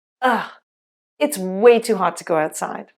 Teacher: “it is” contracts to “it’s” and “to” reduces to “ta.”